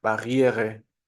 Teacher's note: la I más la E, que al no estar acentuada va a ser una schwa